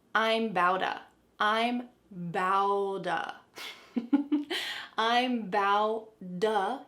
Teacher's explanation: There are T's surrounded by vowels, so what happens? We can change them to a D sound. And this is all gonna link together in one fast word.